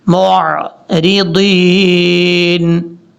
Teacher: میم کے بعد جو عین ہے اس کو جھٹکے سے نہیں پڑھنا، نارمل طریقے سے پڑھنا ہے